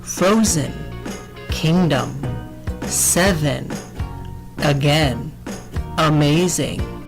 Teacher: the vowels are being lazy because they're in the unstressed part of the word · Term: schwa